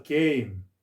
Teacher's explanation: 서로 다른 두 개의 모음을 연달아 발음하는 것인데, 앞에 모음은 길게 발음하고 뒤에 모음은 짧고 약하게 발음한다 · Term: 이중 모음